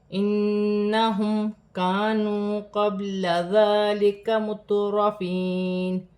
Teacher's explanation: نون مشدد ہے، نون مشدد میں غنہ کیا جائے گا، میم ساکن میں غنہ نہیں ہوگا